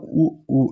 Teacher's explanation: அதுக்கப்புறம் உ உ இது ரெண்டுமே பார்த்தோம்னா உதடை வந்து நம்ம குவிக்கும்போது உருவாகிற எழுத்து